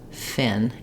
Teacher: do that F in shorten up and just say Fin and make sure that you still allow the air to flow even though you don't hold that F sound as long